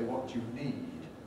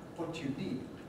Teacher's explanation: One rather striking thing about Scottish English to English ears is that you get shortening of vowels before D, the voiced consonant, which we don't get in English English.